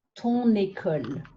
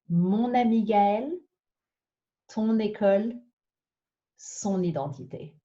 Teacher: If it's a feminine noun that is single and the first letter of that word is either a h or a vowel, instead of using ma, ta, sa before a vowel or a h, we're changing it to the masculine possessives, mon, ton, son, because it allows us to make a beautiful liaison sound. For example, mon amie Gaëlle, my friend Gaëlle.